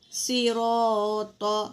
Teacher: پھر را کے اوپر زبر ہے تو یہ بھی پر ہوگی، صراط، صاد بھی پر ہے، را بھی پر ہے، موٹا پڑھیں گے